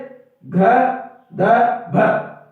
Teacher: महाप्राण ध्वनियां क्या होती है, वो ध्वनियां होती है जिनका उच्चारण करने में हमारे को थोड़ा सा श्वास भारीपन रूप से निकलती है, और अल्प प्राण वो होती है जिनके उच्चारण में श्वास क्या होती है, थोड़ी हल्की होती है, यानी कुछ भारी ध्वनियां होती है, जैसे घ ध भ, है ना, घ और भ, ये कौन सी हमारी भारी ध्वनियां है एक प्रकार से।